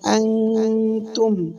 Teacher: নুনকে নাকের ভিতর গোপন করিয়া গুন্না করে পড়তে হবে